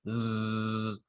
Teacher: your glottis is vibrating, and you can actually feel this in your throat with your hand. If you say a bunch of different sounds, so like zzz, you can feel the vibration of your glottis through the outside of your throat.